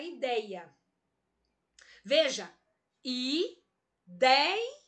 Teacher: O dei é a sílaba mais forte. É a penúltima.